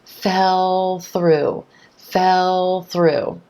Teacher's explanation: that dark L sound flows right into the th at the beginning of through fell through fell through here's the thing the L sound is